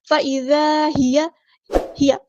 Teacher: یا کی جو زبر ہے اس کو لمبا نہیں کریں گے، ہیا نہیں پڑھنا، ہیا تمور.